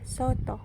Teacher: vokal o Tengah atas belakang bundar